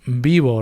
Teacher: It's like bilabial or approximant.